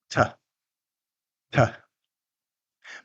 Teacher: Fully released T requires, as we talked about in the last episode, stopping the air, building pressure, then releasing.